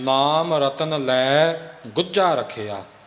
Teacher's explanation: ਗੁੱਝਾ ਪਦ ਵੀ ਕਸ ਕੇ ਉਚਾਰਨ ਕਰਨਾ ਤੇ ਰੱਖਿਆ ਪਦ ਵੀ ਥੋੜਾ ਜਿਹਾ ਕਸ ਕੇ ਉਚਾਰਨ ਕਰਨਾ